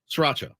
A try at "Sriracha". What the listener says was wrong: It's not sriracha. It's not sriracha. You're adding a vowel to a spot where one does not exist. SRIRACHA. Sriracha. It's like two R's there, which is difficult. It makes it difficult. The extra R makes that word.